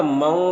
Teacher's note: تنوین کو واو سے ملا کر غنہ کے ساتھ پڑھیں گے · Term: ادغام ناقص